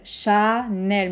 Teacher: Même temps pour les 2 syllabes.